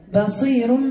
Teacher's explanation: الراء مرققه قبل من ياء سكونها